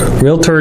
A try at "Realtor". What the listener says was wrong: Yeah, not realtors. Yeah, it's REALTOR. There is no A or I in the middle of the word.